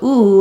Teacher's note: ooh like room and food Etc is very tense and round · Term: oo vowel